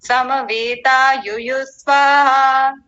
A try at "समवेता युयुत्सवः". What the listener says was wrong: युयुत्सवः, थोड़ा ठीक से बोलिए स्पष्टता से। युयुत्स्वः नहीं, युयुत्सवः। स को पूरा कीजिए, आप आधा कर रहे हैं। हाँ जी, पूरे को बोल दीजिए, पूरे शब्द को।